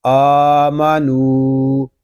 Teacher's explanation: حمزہ کو اور نون کو ہم ایک الف تک کھینچ کر پڑھیں گے کیونکہ حمزہ کے اوپر کھڑا زبر ہے اور نون پہ واو مدہ ہو رہا ہے۔